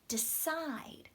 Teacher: decide stress comes on the second part